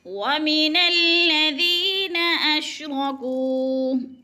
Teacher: را پر ہے، موٹے لفظوں میں سے ہے کیونکہ را کے اوپر زبر ہو تو را پر پڑی جاتی ہے